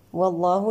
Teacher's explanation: والله لام لفظ الجلالة مفخم لأنه سبقه فتح